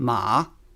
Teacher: The four tones are first tone high and level second tone rising third tone falling rising